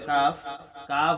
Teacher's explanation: জিহ্বার গোড়ার একটু সামনে আগে বাড়াইয়া আমরা কাফ উচ্চারণ করব